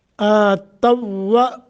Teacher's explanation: آتوا یہاں واو کا واو میں ادغام ہو رہا ہے